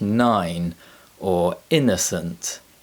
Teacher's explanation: keep your lips apart and press the tip of your tongue against the top of your mouth completely blocking the flow of air and then use your vocal chords to produce a sound from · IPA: /n/